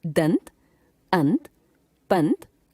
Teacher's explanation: इसमें पहले स्वर का उच्चारण होता है और बाद में नासिक्य ध्वनि का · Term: अनुस्वार